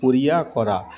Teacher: এখানে মাঝের স্বরধ্বনি লোপ পেয়েছে, তাই এটি মধ্য স্বরালোপের উদাহরণ।